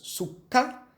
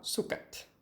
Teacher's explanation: Note que no singular nós temos a consoante geminada e no plural a consoante simples. É efeito desse T que aparece no final.